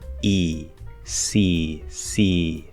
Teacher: if you listen to the vowel sound it's going to sound like it's coming through the mouth · there's very little if any going through the nose i'm not nasalizing